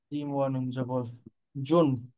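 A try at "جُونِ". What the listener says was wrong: টান কোথায়? এখানে ওই ওই যে নুন আছে না, নুনটারে কিন্তু গুণনাও করতে হবে।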